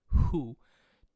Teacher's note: as you're saying hu, modifies into kind of like a f sound